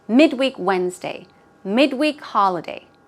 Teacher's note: even when it's used as an adjective, the stress usually goes on the first syllable